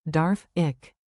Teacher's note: Say Darf. with a clear F, then the soft German Ich. sound, like air slipping over your tongue